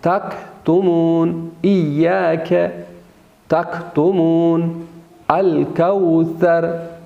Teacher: قاف کو ہم موٹا اور پر ادا کریں گے، بولڈ ادا کریں گے اور سخت ادا ہوتا ہے، جبکہ کاف نرم ادا ہوتا ہے اور وہ بولڈ نہیں ہوتا، باریک ادا ہوتا ہے